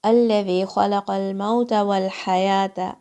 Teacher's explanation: Ha is again a throat letter. It comes from the middle of your throat.